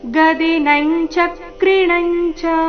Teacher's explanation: ಮುಂದಿನ ಎರಡು ಅನುಸ್ವಾರದ ಉಚ್ಚಾರಣೆ ಚ ವರ್ಗದ ಅನುನಾಸಿಕದ ರೀತಿ